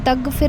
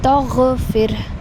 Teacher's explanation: غین کو تھوڑی سی آپ نے خراش لے کر آنی ہے